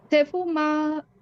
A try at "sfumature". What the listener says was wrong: না, সেফুম না, এটা ইস ইস এরকম উচ্চারণ হবে, স্কুলের উচ্চারণটার মতো। এটা হবে ইসফু। এস অক্ষরের পরে প্রায়, হ্যাঁ, প্রায় শব্দে দেখবেন এস অক্ষরের পরে কনসোনান্টে চলে আসে। তো সেক্ষেত্রে কনসোনান্টটা এই এস অক্ষরের উচ্চারণটা হবে ইস। ইসফু, ইস রেখে এরপরে হচ্ছে ফু মা তুরে, তাহলে ইসফু মাতুরে।